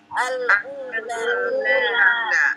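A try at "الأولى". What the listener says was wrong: Iya, iya. Panjang, panjang. U-nya panjang. Al-ula.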